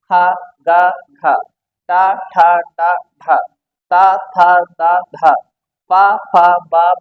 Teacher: स्पर्श ही कर रहे हैं बस संघर्ष नहीं कर रहे हैं